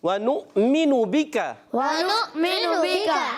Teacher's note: حمزہ کو جھٹکے سے ادا کریں گے اور کاف کو باریک رکھنا ہے